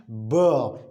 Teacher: when you pronounce buh there is a very visible and obvious vibration in the neck in the vocal cords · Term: voiced